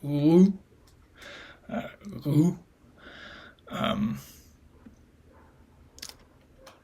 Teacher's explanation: The lips are pursed and there's labialization.